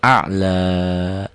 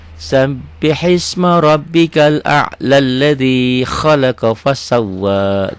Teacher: A'la kalau dihentikan dibaca panjang, tapi kalau disambung enggak jadi panjang.